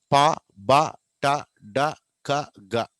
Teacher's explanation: గాలి పూర్తిగా ఒక చోట ఆపేస్తాం, బ్రీఫ్లీ అంటే కొద్దిసేపే, కొన్ని సెకండ్లు, మేబీ సెకండ్లో కూడా తక్కువ కాలం. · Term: ప్లాజివ్స్